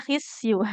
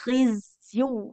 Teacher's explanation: Huruf zai jangan jadi sin ya. Satu makhraj memang. Tapi kalau huruf sin itu mengalirkan nafas zai tidak.